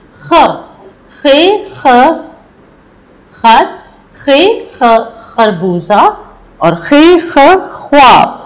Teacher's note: ख की आवाज आपको हलक से निकालनी होगी।